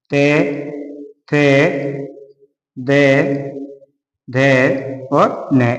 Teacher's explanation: दंत यानी दांतों के द्वारा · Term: ते वर्ग